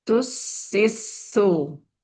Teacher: Jadi semuanya dialirkan, semuanya pun berdesis, kedengaran desisnya ya.